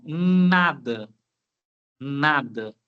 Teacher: Passou um pouquinho ali pelo nariz. Por isso que é difícil conversar quando você está gripado, não é verdade? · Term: nasal